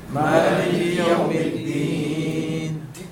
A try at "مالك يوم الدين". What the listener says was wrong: Dal, take care, it is not ta. Okay? Because they are different in the qualities. Which is dal wa ta, they are different in the traits and the qualities of them.